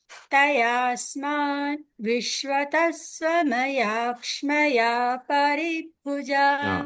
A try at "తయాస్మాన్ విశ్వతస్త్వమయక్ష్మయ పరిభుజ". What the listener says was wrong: దీర్ఘాలు మధ్యలో వస్తున్నాయి ఆ దీర్ఘాలు రావద్దు